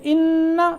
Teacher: ان یہاں نون مشدد پہ غنہ ہوا ہے